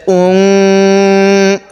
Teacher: নাকের বাসি দ্বারা গুন্না করব